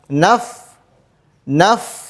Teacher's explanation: huruf fa juga memiliki sifat rakhawah yang artinya suaranya panjang panjang